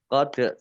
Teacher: Qad dal sukun bacaan qalqalah. Dibaca memantul, ditampakkan pantulannya.